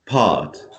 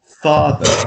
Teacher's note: It's ah, very deep and long, right?